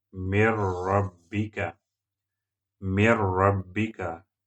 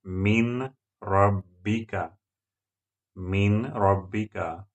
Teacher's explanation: You have to apply rule of Idgham because Ra letter is coming after Nun Sukun. Add this Nun into Ra and pronounce it Mir.